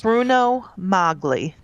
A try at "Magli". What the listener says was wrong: But I think they pronounce it Mowgli. I don't think you pronounce the G. I don't think you pronounce it though.